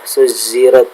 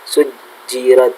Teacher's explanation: ada sebagian orang yang terkadang jimnya itu kayak za, ya, suzirat, adalah yang betul adalah ja, ya, sujirat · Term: pelafalan jim